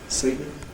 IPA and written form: ˈsɜɪtn̩ (certain)